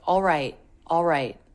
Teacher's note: The L is said very quickly. It's a dark L